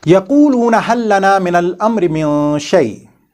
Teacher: we have to do an idgham of this LAAM Saakinah into this next letter lam or ra